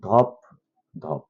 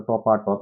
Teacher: অসমীকরণ মানে কোনো ডাবল ধ্বনি, অর্থাৎ দুইটা একই ধ্বনির পুনরাবৃত্তি যেন না ঘটে, সেজন্য মাঝখানে আ ধ্বনি আসবে